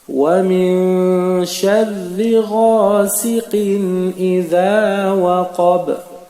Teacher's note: la lettre ba, qui fait aussi partie des 5 lettres de qalqala, se trouve en position de sakin. Donc, on va appliquer la règle de la résonance.